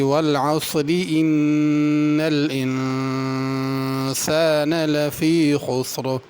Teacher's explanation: ان پہ بھی غنہ کرنا، الانسان کے نون پہ بھی غنہ کرنا ہے